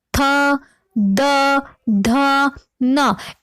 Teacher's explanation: इन वर्णों के उच्चारण में हमारी जो जीवा है वो हमारे दंत को, हमारे दांतों को स्पर्श करती है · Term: दंतय वर्ण